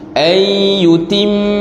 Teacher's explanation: Nun mati bertemu dengan ya, hukumnya idgham ma'al ghunnah. Ayyutim, mim yang bertasydid juga ada dengung.